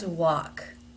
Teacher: notice that the word walk even though it is spelled with an L has no l sound in it